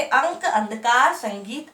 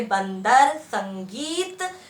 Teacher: अंग की मात्रा जिसे अनुस्वार कहते हैं, इसका उच्चारण करते समय गले और नाक का स्वर लगता है।